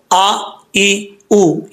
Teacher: یہ حمزہ کا ساؤنڈ ہے، حمزہ کی آواز ہے، اس کو عین کی طرح نہیں پڑھنا